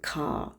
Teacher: The R is silent in standard British English today. Yəni hal-hazırda standart Britaniya İngiliscəsində R hərfi səssizdir.